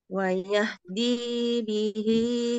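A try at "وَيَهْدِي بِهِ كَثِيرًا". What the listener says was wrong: Di-nya kepanjangan, Bu, di-nya. Wayahdi bihi. Nah, sedikit saja, ayo.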